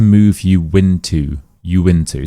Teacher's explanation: this word ends in a ooh sound. Next word starts with a vowel sound. So we add the W to help bridge them together. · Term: W rule